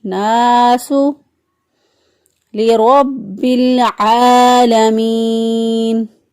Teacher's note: را کو پر پڑا کیونکہ را کے پر زبر ہے. را کے پر زبر یہ پیش ہو تو را کو پر پڑھتے ہیں, را کے نیچے زیر ہو تو را کو باریک پڑھتے ہیں.